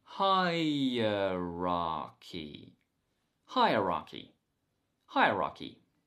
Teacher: and today's word is hierarchy hi rocky hi uh ra key the stress is on the first syllable